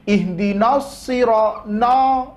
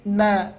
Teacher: Yaitu ketika ada huruf tipis, setelahnya terdapat huruf tebal. Nun di sini huruf tipis, setelahnya terdapat huruf so, huruf tebal.